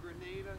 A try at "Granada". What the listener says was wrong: It's not how you say it. It's Granada, not Grenada.